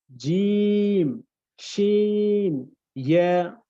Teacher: জিহ্বার ঠিক মাঝ বরাবর উপরের তালুর সাথে আমরা অ্যাডজাস্ট করব